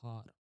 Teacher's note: A low back. A low back. Open sound.